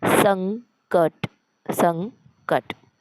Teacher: स वर अनुस्वार दिल्यानंतर पहिले स वाचायचं मग अनुस्वार वाचायचा आणि अनुस्वाराचा आवाज नाकातून निघेल संणखणीत आणि स्पष्ट असा आपल्याला उच्चार करायचा आहे सं क ट